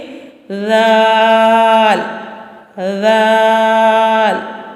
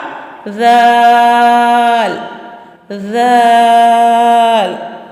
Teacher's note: ذال ہماری زبان کی نوک اور سامنے والے دانتوں کے کنارے سے، اوپر کے سامنے والے دانتوں کے کنارے سے ادا ہو رہا ہے۔ ذال نرمی والا حرف ہے، سیدھی کی آواز بالکل نہیں آنی چاہیے۔